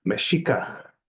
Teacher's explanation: The X is pronounced as SH, and it's intentionally made that way. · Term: SH sound